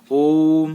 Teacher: तो प्लुत स्वर में जो 3 लिखा है यही ओम है। तो ये ओ को थोड़ा लंबा खींचना है, थोड़ी देर ज्यादा बोलना है। तो ये इस प्रकार से प्लुत स्वर हुआ। · इसके उच्चारण में ह्रस्व की तुलना में तिगुना समय लगता है। इसका प्रयोग दूर से पुकारने या गाने आदि में होता है।